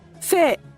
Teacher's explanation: فاء من حروف الهمس متحركه بالكسر